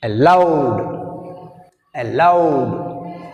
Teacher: In this word we have two syllables. A is weak prefix, that's why we have stress on second syllable L.